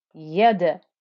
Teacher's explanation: The dal got the qalqala.